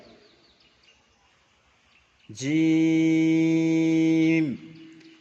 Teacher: জিমের মাখরাজ জিম, তিন আলিফ টান হবে, বলে দিয়েছিলাম তিন আলিফ পরিমাণ, এই যে জিম। জিমের মাখরাজ জিবের মাঝখান তার বরাবর উপরের তালুর সঙ্গে লাগিয়ে উচ্চারিত হয় জিম, চেপে হবে। শিন, ইয়া, জিম, শিন, ইয়া, একই মাখরাজ।